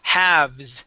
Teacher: that L is going to be silent.